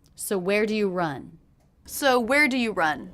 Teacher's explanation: do you hear the stressed words in that question where run